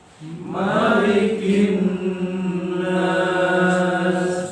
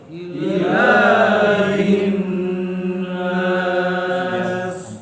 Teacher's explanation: dihukum nun bertasdid adalah gunnah, maka bacanya harus ditahan dengan ketukan 3 ya, 3 saja ya, 2 sampai 3 pun boleh ya.